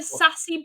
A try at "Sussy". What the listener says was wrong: Yes, but I think it's not pronounced sassy, but Sussy.